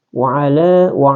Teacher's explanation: Jadi wa'ala ini di sini dia masuk lagi adalah mad tabi' atau mad asli, ya, mad asli. Dibaca kembali dua harakat